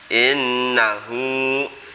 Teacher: Kemudian innahu, ini seperti tadi, nunnya bacaan huna harus berdengung 2 harokat.